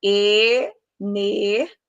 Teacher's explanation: na pronúncia de energia, eu separo o I e o A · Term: hiato